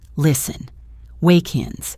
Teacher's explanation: The most important connection here is between walk and ins. The final K sound of walk connects directly to the I of ins. It creates one smooth sound, wake-ins.